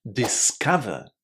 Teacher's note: It was a short ah, wasn't it? Exactly like the sound in just or but.